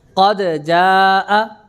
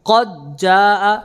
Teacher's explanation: قد جاء، دال کا جیم میں اظہار، قد جاء دال کا جیم میں ادغام